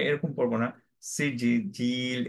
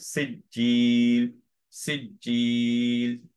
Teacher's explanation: কলকলাটা completely বাদ শুধু সাদ্দাটা থাকবে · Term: কলকলাটা সাদ্দায় বাদ